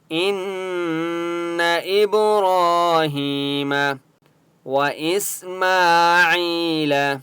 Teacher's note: سین کے اوپر سکون ہے، حمزہ کو سین کے ساتھ ملائیں گے